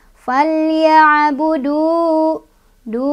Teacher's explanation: فَلْيَعْبُدُوا مَطَبِئِ karena ada waw sukun, sebelumnya ada domah di huruf dal ya. Panjangnya dua harokat.